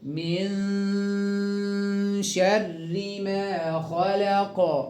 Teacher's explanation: نون ساكنة بعدها الشين إخفاء حقيقي، هنخفي النون مع الشين بغنى حركتين